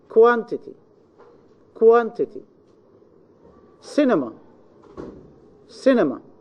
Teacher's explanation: Now, if the final syllable contains a short vowel and the middle syllable contains also a short vowel and ends with not more than one consonant, then both the final and the middle syllables are unstressed, and the first syllable is definitely stressed · the stress must be in the third syllable from the end.